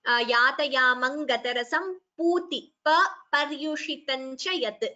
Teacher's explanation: So pa are alpaprana. There is no mahaprana there.